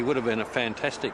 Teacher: when unstressed words begin with the letter H the H sound is often dropped in Connected speech